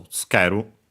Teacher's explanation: Accented, notice that tsu, the u barely heard if at all, because it's between unvoiced consonants, so tsukeru.